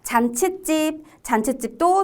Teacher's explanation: 잔치집도 뒤에 찝 소리가 나죠? 그럼 시옷을 넣어줘야죠.